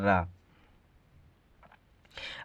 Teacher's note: है लुंठित तथा लोड़ी किसे कहते हैं इसका उत्तर हो जाएगा इसमें मुख द्वार जीभ की नोक से शीघ्र ही बंद होता है और दो तीन बार खुलता है